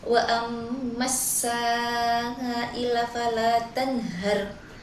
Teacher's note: Pada lafaz amma ini terdapat hukum guna musyaddadah karena mim bertasydid sehingga dibaca dengung dua harakat